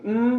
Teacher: an um sound with the lips closed so it's sort of going from most open to closing down